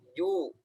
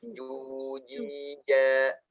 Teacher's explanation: Jangan cu, tapi ju. Dia tidak ada aliran, dia tertahan. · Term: Jim